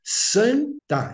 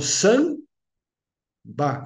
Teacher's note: quando eu falo san tá eu levanto a língua para fazer o tá quando eu falo Sam ba eu fecho a boca mas para fazer o b e não para fazer Sam ou San né Aí nós estamos